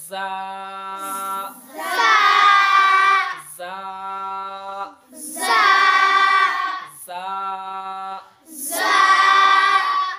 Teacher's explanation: জার উচ্চারণ জিহ্বার আগ, জিহ্বার আগ এবং উপরে দাঁতের আগ, জিহ্বার আগ এবং উপরের দাঁতের আগগুলো মিলে রা উচ্চারণ হয়, জা উচ্চারণ হয়।